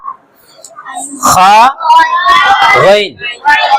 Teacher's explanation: खा गैन का मखरज अदनाए हलक, यानी हलक का मुंह की तरफ वाला हिस्सा। 3 हिस्से करे थे हमने हलक के, ऊपर वाला, बीच वाला और नीचे वाला।